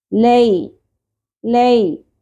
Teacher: زبر کے بعد یا ساکن حروف لین میں سے ہے، اس لیے اس کو لے نہیں پڑھنا۔ لئی ل شارٹ رکھیں گے۔